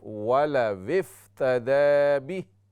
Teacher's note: वाव की आवाज़ आनी चाहिए, हमज़ा नहीं है यहाँ पर